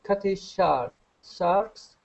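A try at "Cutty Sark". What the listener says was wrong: it's not a shark it's a sark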